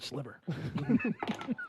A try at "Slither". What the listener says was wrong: Slither. Not Sliver. Slither. With the TH, yes,